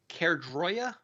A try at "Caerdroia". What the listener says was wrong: Are you sure it's a hard A at the top?